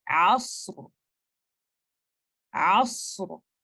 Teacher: आपने सौत को भी तफखीम के साथ पढ़ना है, सौत एक तफखीम का लेटर है, इस्तिअला का भी लेटर है।